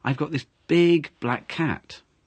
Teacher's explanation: it's not a small cat it's a big cat cuz you stressed big